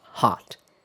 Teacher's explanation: in most varieties of American English, the vowel is more open.